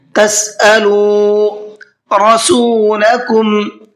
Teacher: را کو پر کر کے پڑھنا ہے اس لیے کہ را کے اوپر زبر ہے